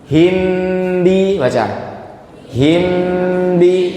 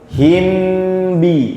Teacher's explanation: Mim sukun ketemu ba langsung diucapkan ke makhrajnya huruf ba. Ya karena emang huruf makhrajnya sama. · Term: ikhfa